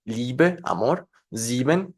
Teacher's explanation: típicamente esto no es un diptongos es una I larga y así la debemos de pronunciar